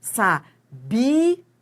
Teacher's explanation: no verbo, a sílaba tônica é o bi